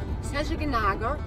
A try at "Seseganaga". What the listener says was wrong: Seseganaga. No, not Ganagra. Seseganaga. Nearly.